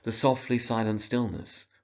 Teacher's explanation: works because of the sibilants repeating the S sound